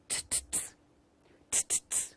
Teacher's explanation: In terms of place of articulation, this sound is an alveolar sound. Why? Because teeth ridge is also called alveolar.